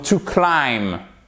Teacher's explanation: Vous voyez, vous ne prononcez pas le B.